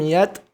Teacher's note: huruf ta, sukun, ada percikan nafas